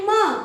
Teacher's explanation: आपले दोन्ही ओठ एकमेकाला अटॅक झाले म्हणजे एकमेकाला जवळ जवळजवळ आले तेव्हा म चा उच्चार होतो